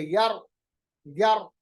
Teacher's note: میری آواز میں تھوڑی تھرتھراہٹ پیدا ہوتی ہے، لرزراہٹ پیدا ہوتی ہے، جس کو صفت تقریر کہتے ہیں.